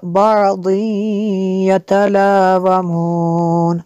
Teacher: تنوین کے بعد یا ہے حروف معلوم میں سے، تو یہاں پہ ادغام ہوگا۔